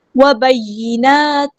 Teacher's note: نون پہ حرکات مد آئی ہے، 2 کاؤنٹس لمبا کریں گے · یا جو ہے وہ شد والا تو دھیان سے ادا کرنا ہے، ایک بار ساکن کر کے ایک بار حرکت کے مطابق، اور جو ہے جماؤ کے ساتھ ادا کریں گے۔